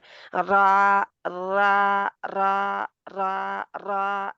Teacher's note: جو را کو ادا کرتے وقت کنارہ زبان کا جو ہے اس میں کپکپی سی شروع ہوتی ہے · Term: حرف مقرر